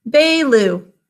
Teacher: We think to spell his name Baloo because that first syllable is unstressed